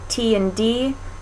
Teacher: you can feel the tongue touching pretty close behind the teeth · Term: alveolar ridge